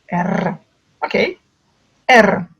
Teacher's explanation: C'est exactement le son russe. Donc, R, il est au bout de la langue, on roule le R.